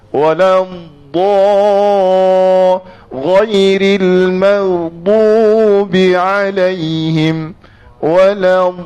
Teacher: huruf dad adalah huruf yang dikatakan tepi lidah memanjang bersentuh dengan geraham hujung lidah tekan di atas gusi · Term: istitalah